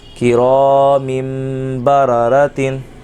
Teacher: دو زیر من تھا تنوین کی آواز تھی من لیکن یہاں تنوین کے بعد جب با آ گیا تو اقلاب کا قاعدہ لگا کرامن کی جگہ کرامم پڑھا جائے گا